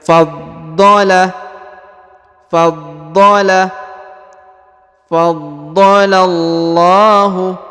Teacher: di atas huruf do terdapat tasdid ya, maka dia harus ditahan dan ditekan.